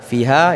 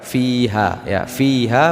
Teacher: kita lihat fiha, ya, ini mad tabi'i ataupun mad asli 2 harakat.